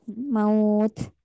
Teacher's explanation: Ada aliran udara hamas di ujungnya